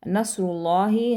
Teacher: ہا کو سینے سے ادا کریں گے